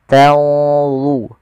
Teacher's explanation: Kemudian tanzurun ada nun mati ketemu dha, ikhfa-nya langsung ke dha, agak tebal